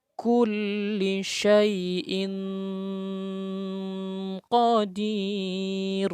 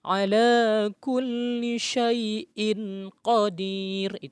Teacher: nun mati atau tanwin bertemu dengan salah satu huruf yang Hai maka dibaca dengung ya dibaca dengung dan disamarkan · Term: ikhfa